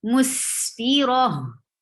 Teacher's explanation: Ra will not be long because this is not a mud letter. So you will not stretch it.